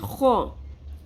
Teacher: اولائک، ہا، ہا پیش میم ہم. خو خراش کے ساتھ پر حرف خو، کھردرا، کھردری ساؤنڈ آتی ہے خو. خو زبر یا ساکن.